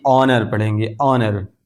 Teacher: یہ H silent ہے، خاموش ہے، اس کو نہیں پڑھیں گے بلکہ آنر پڑھیں گے